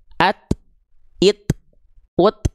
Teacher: Ketika huruf ta dalam kondisi mati atau sukun, at it, ut ada percikan nafasnya.